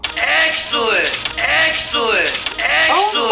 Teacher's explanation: You can hear that in a clip here when they say excellent, that's a lower dress vowel